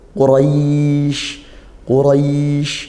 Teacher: Nah karena dia fathah diikuti Alif gitu Quraisy Qurais ro ro rnya dibaca tafkim karena fathah dibaca tebal pangkal lidah dinaikkan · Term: tafkhim